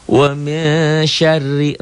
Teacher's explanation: r-nya dibaca tipis karena barisnya di bawah